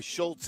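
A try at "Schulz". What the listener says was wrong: Schultz, yeah, with no T. Schultz.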